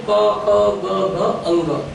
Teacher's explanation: એનું પહેલા છે તો કંઠ્ય. કંઠ્ય એટલે કે જે કંઠમાંથી બોલાતા હોય, સીધા કંઠમાંથી જેના ઉચ્ચાર થતા હોય